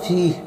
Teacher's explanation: فا یا زر فی یا مدہ ہے، ایک الف کھینچ کر پڑھیں گے